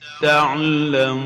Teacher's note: An example is تعلمون, while the correct way of pronouncing it, as we hear it from Sheikh al-Husari, تعلمون. So we have to make sure to purse the lips enough when pronouncing the wow, so to avoid the O sound